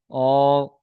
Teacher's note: দু ঠোঁট না মিলিয়ে মাঝখান থেকে উচ্চারিত হয় অ। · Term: 14 নাম্বার মাখরাজ